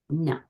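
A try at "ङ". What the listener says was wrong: No, that's a little different than what I'm saying. So nga, it's at the back of the palate, upper palate, very back.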